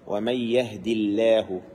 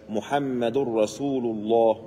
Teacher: if the لفظ الجلالة of Allah the lam preceded by كسرة you have to make it the lam light